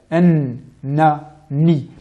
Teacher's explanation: La lettre nun, dont le point d'articulation est le suivant, l'extrémité de la langue, en appui sur la papille incisive, donc le petit morceau de viande au-dessus des incisives supérieures.